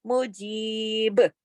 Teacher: تو یہ یا مدہ ہے، اگر اس حرف پہ ہم رکیں گے تو کیسے رکیں گے؟ مجیب، یعنی با پہ کلکلا بھی کر دیں گے کیونکہ با ساکن ہو جائے گا نا، تو با پھر کلکلے والا حرف بن جائے گا مجیب، اور جیم کو کھینچیں گے، جیم کی آواز کو کھینچیں گے اور با پہ رک جائیں گے اور با پہ کلکلے کے ساتھ رکیں گے۔